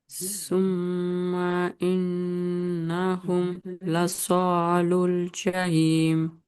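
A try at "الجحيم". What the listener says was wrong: जहीम। हा का थोड़ा मखरज अदा करिए और अच्छा हो जाता हूँ।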